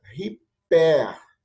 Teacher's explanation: Ó, hiper, se fosse a aspiração branda. Mas como é a aspiração forte, por causa da vírgula ao contrário, ela é pronunciada riper.